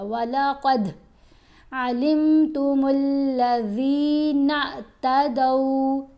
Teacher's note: قاف کو ہم نے موٹا پڑھا، دال کے اوپر کلکلا کیا